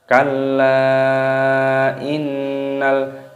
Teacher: nun tasdid hukumnya dibaca gunnah berdengung, maka di sini didengungkan, dan di sini ada lam alif, lamnya sukun dibaca mati, dibaca innal insana.